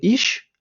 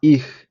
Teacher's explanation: іщ багато хто вимовляє тому що це такий діалект якраз південних частин Німеччини а насправді правильно грамотно говорити іх така з м'ягкизнаком ха м'ягка